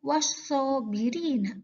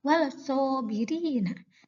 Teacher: Sod, alif lam bertemu dengan sod. Sod adalah huruf syamsiah, maka suara lam hilang berganti dengan suara sod. Dibaca wasobirina, bukan dibaca walsobirina. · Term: idgham syamsiah